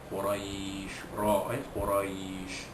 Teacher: ra itu bari atas maka dibunyikan tafkhim, ya, bunyi tebal